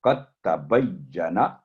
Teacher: جیسے آپ دیکھ سکتے ہیں یہ قدتا نہیں ہوگا، قطع. دال ٹوٹلی سائلنٹ ہو جائے گا کیونکہ اس کے اوپر جزم اور تا پر تشدید ہے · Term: ادغام کامل